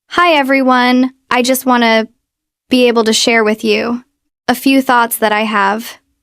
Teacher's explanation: Notice how I'm very breathy, and I have to keep stopping for air. You want to control the amount of breath that's escaping your mouth.